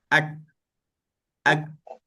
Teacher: kita rasa tak kita punya pangkal lidah tu dekat sentuhan dekat belakang langit atas tu, kat tekak tu, dia ada sentuhan. Ak. Jadi di situlah kita angkat pangkal lidah.